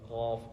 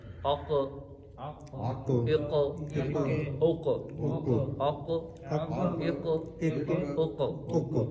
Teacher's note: قاف ہے یہ زبان کی جڑ اور تالو کے نرم حصے سے ادا ہوگا